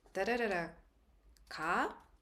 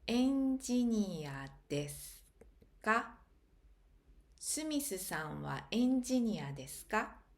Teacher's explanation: the particle ka is pronounced with a rising intonation